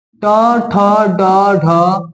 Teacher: इसको आप जब बोलते हैं ना तो आपका जीभ थोड़ा सा मुड़ के टच होता है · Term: मुद्रा